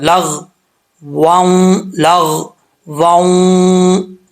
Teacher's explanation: یہاں پہ واو کے اوپر 2 زبر ہیں, دوسری واو کے اوپر شد ہے, تو ادغام یرملون ہوگا. 2 زبر کے بعد واو آ رہا ہے ادغام حروف یرملون میں سے, تو 1 الف کی مقدار یہاں پہ غنہ ہوگا